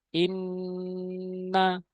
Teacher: আমরা গুন্নাহ করব, নাকের ভিতরে নেব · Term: ওয়াজিব গুন্না